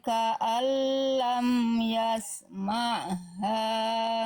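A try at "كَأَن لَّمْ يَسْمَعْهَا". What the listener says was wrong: Ainnya kurang nekan. Ma ha ma ha dari tengah-tenggorokan ya. Tekan kalau tadi nanggung ya. Ain bukan hamzah bukan ya.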